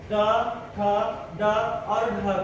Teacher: यहाँ मूर्धा बताना, देखिए मूर्धा जो शब्द होता है ट, ठ, ड, ढ, जीभ को यहाँ पर आपको फोल्ड करना पड़ता है। जीभ थोड़ा सा फोल्ड होकर तालु से टकराती है और तब जाके इन अक्षरों का प्रोनाउंसिएशन होता है ट, ठ, ड और ढ का।